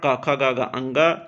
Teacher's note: इनका जो उच्चारण स्थान होता है वो कंठ होता है